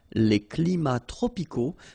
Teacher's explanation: we don't pronounce the S, and then we don't pronounce the T either